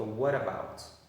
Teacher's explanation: você junta o what com o about e aí você tem um T entre duas vogais no meio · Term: junção de palavras